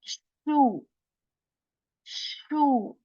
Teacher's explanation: this letter has a quality that air spreads in our mouth when we say Sheen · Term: letter Shen